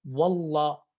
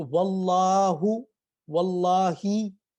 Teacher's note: اور اگر یہ بطور حرف کے طور پر اپنی آواز کے طور پر آئیں گے، جیسے واو، واللہ، اب واللہ میں جو واو ہے یہ بطور واول نہیں آ رہا، یہ آ رہا ہے ایک عام آواز کی طرح رکاوٹ کے ساتھ، واللہ۔ اب اس میں کیا کرنا ہے، ہم نے جس طرح واو کو پڑھا تھا کہ واو کے لیے ہم نے ہونٹوں کو گول کر دینا ہے، تو واللہ، واللہی، ٹھیک۔